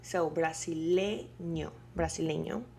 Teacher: where you have to put all the strength of your voice is in le